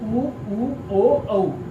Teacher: इनका उच्चारण करने पर हमारे ओष्ठ वृत्त की तरह गोल हो जाते हैं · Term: वृत्ताकार स्वर